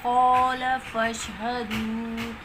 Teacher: قاف موٹا پڑھا جاتا ہے